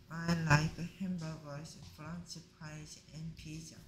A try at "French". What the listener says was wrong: 프런치입니까? 프렌치입니까? 무슨 자꾸 프런치래? 프렌치.